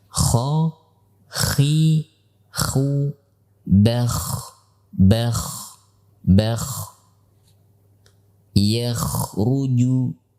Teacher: huruf kha termasuk huruf yang ringan atau huruf rokhawah, sehingga ia mengalir pada suara, tidak bertumpu kepada makhrajnya.